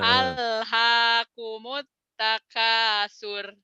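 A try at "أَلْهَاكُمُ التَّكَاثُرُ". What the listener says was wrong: Alhaakumut takatsur. Itu pendek ujungnya. Takatsur. Karena matobi'inya tidak ketemu satu, ketemu dua. Jadi pendek. Jangan takasur. Takatsur.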